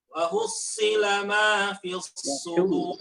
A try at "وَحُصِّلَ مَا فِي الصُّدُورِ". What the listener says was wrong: وحصل حاء، اضبط الحاء. نعم.